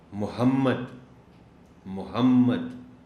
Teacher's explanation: میم چونکہ شد اور زبر کے ساتھ ہے، تو اس کا مطلب یہ ہوا کہ پہلی میم کے بعد جو ہے اس پہ آپ نے زور دینا ہے، تبھی دوسری میم کی شد کے ساتھ آواز پیدا ہوگی